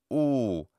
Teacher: pointing up to say that it's not merely o but ooh it's a closer oo sound but not quite o